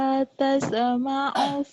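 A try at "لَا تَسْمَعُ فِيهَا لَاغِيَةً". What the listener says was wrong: Tas ada e-nya tuh, jangan ada e-nya. Lah, tas, jangan ada e-nya.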